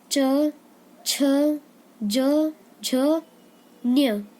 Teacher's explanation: इस चवर्ग में तालु जो होता है हमारा, उसे जीभ टच करती है, छूती है